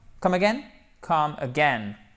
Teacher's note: vous faites bien l'accent tonique sur la 2e partie du mot